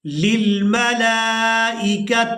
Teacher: لام کو کھڑی زبر اور مد کی وجہ سے کھینچ کر ادا کریں گے۔